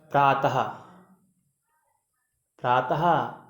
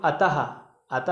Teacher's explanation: विसर्ग का उच्चारण हम हा की तरह करते हैं